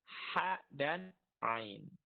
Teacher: tenggorokan bagian tengah tempat keluarnya huruf ha dan ain